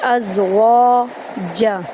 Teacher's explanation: سبحان الذی خلق الازواج، خا اور قاف کو پر کریں گے، لام کو آرام سے پڑھیں گے، لام قاف کو لام کے اندر داخل کریں گے، حمزہ کو زا میں داخل کریں گے، از واو کو ایک الف کے برابر لمبا کریں گے، ازواج جیم کو یہاں پر ہم آرام سے پڑھیں گے، یہاں پر کلکلا نہیں ہوگا